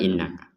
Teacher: ada Nun bertasdid kita dengungkan